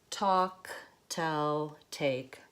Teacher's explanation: an aspirated tea so a tea with a puff of air an aspirated tea it's what we use at the beginning of words in American English so when I say talk Towe take there's a little puff